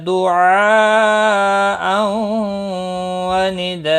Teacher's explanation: دعاء، یہاں پر مد متصل ہے، چار الف کے برابر کھینچ کر پڑھیں گے۔ تنوین کے بعد حروف یرملون کا واو آیا ہے، ادغام باغنہ ہوگا۔ نداء، اور یہاں پر آپ دیکھ رہے ہیں وقف کی صورت میں یہاں تنوین کو بدل کر ایک زبر کے ساتھ وقف ہوگا، الف مدہ بنے گا، اور مد کے ساتھ وقف ہوگا، ایک الف کے برابر کھینچ کر وقف کریں گے، وقف بالابدال ہوگا۔